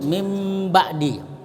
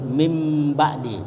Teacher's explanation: Jadi bibir dipertemukan, ya, dengan menutup mulut, mim ba'di. Jadi nunnya itu berubah menjadi mim. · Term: iklab